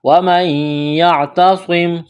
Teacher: نون ساکن کے بعد یا ہے، یہاں پر ادغام کریں گے، ادغام کا قاعدہ جاری ہوگا غنّے کے ساتھ